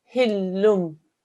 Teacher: And I'll do a slight nasal sound, hillumbi, okay? So there'll be no noon sound, but there will be a nasalization.